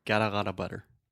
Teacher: we also have the flap T so that is the sound that sounds more like a d honestly